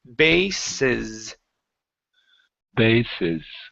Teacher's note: So, you've got the Z and the S flipped around. So, the first S is a uh unvoiced S. The last one is a voiced S.